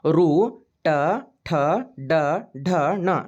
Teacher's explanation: ಟ ಠ ಡ ಢ ಣ ನೋಡ್ರಿ ನಾಲಿಗೆಯ ಮೇಲ್ಭಾಗ ನಾವು ಮಾತಾಡುವ ಮುಂದೆ ಈ ಅಕ್ಷರಗಳನ್ನ ಉಚ್ಚಾರ ಮಾಡುವ ಮುಂದೆ ನಮ್ಮ ನಾಲಿಗೆ ಬಾಯಿಯ ಮೇಲ್ಭಾಗಕ್ಕೆ ಟಚ್ ಆಗ್ತೈತಿ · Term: ಮೂರ್ಧನ್ ಅಕ್ಷರಗಳು